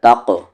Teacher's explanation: قلقلہ ہوگا یہاں پر bouncing sound